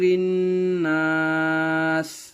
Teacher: الف سے پہلے زبر ہونے کی وجہ سے یہاں الف مدہ ہوا, الف مدہ کو تھوڑا کھینچ کر پڑھیں گے